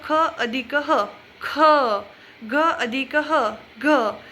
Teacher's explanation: महाप्राण म्हणजे ज्या अक्षरात ह चा उच्चार होतो, म्हणजेच मोठा श्वास घ्यावा लागतो आपल्याला किंवा मोठ्याने बोलावं लागतं.